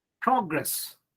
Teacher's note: you have to give stress on the first syllable if it is used as a noun